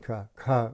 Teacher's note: So you begin the alphabet with in your throat, ka, just ka, and then an aspirated ka, with a little breath to it